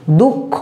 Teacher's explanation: দেখো এই যে দুঃখ বানানটা যখন হয়েছে, বিসর্গটাকে দেখো আমি এখানে আর লিখিনি, বরঞ্চ বিসর্গ খটাকে দুবার করে দিয়েছে। দুঃখ বিসর্গ নিজে উচ্চারণ হয়নি বা অন্য কোনোভাবেও উচ্চারণ হয়নি, শুধু খটাকে দুটো করে দিয়েছে